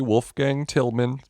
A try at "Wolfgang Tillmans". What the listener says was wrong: It's Wolfgang Tillmans with an S.